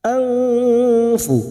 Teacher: nun sukun bertemu fa ikfa hakiki, kita samarkan dan mendengung selama 2 atau 3 harokat.